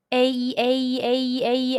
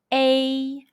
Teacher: When you pronounce the Mandarin Chinese A sound, the lips are spread and the mouth is half opened.